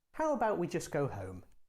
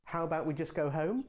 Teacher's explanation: the suggestion with the rising tone sounds more like a real question because it sounds more indirect and hesitant